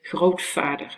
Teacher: you actually devoice the v, and you say grootvader, and you make it into a f.